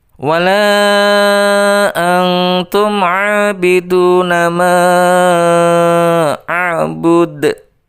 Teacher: dipantulkan karena huruf dal itu adalah huruf qalqalah